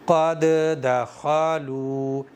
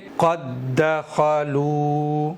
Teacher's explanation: بعد والی دال کو ہی پڑھیں گے تشدید کے ساتھ میں، پہلی والی دال سائلنٹ ہو جائے گی، پڑھی ہی نہیں جائے گی۔ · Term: ادغام مثلین